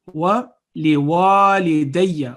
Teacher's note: It's wali walidayya because there is an alif. It will elongate the sound of wa 2 seconds.